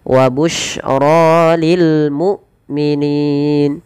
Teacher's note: Hamzah tidak boleh diseret, dan dia harus dijelaskan suara bunyinya, penahanan daripada suaranya dan penahanan dari nafasnya.